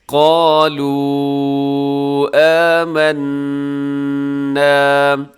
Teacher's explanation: جائز بھی کہتے ہیں اور چھوٹی مد بھی کہا جاتا ہے۔ قالوا آمنا، اسے 4 سیکنڈ تک آپ نے لمبا کرنا ہے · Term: مد منفصل